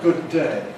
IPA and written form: ˈgʊd̚ ˈdeɪ (good day)